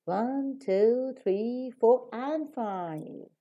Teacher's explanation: so for all the Alternatives before you raise up and for the last alternative you fall down